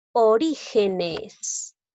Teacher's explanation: Lleva la mayor fuerza de voz en la sílaba ri, es decir, en la sílaba número 3.